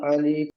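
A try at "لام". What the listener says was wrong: আলিফ নয় ভাই, এটা লাম।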